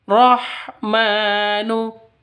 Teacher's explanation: ma panjang dua ketukan karena ada tanda berdiri di atasnya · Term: mad asli